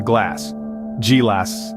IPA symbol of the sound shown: g